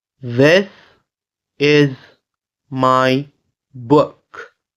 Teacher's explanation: this is the voiced TH sound followed with the IT sound and followed with the S